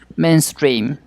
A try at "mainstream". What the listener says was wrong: Main, not men, mainstream.